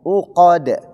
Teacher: Qaf di situ tebal, dal di situ tipis dan dia huruf qalqalah. Maka dibaca separuh.